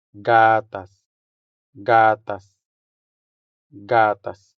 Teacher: The stress here falls on the first syllable, making the first a sound longer than the second one.